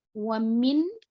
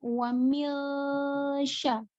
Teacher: jadi nun sukun ketika sebelumnya nun sukun ketemu dengan huruf ikhfa maka nun sukun ini samar-samar ke huruf selanjutnya